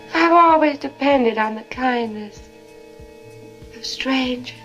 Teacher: You hear how there's no R in strangers? Strange. That's a non-rhotic accent.